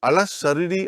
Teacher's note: I did not pronounce alif, I did not pronounce lam. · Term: shadda